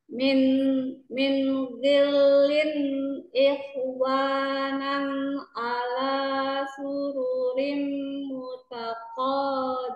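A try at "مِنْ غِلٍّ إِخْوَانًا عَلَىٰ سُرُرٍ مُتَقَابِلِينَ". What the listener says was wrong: Ikh, kh-nya kurang ngorok ya. Kemudian sururin, coba lebih dengung lagi.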